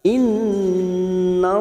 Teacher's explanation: Nun yang bertasdid gunna musaddadah kita tekan selama 3 harokat. Innallaha, lam jalalah yang didoli fathah kita baca tafkim.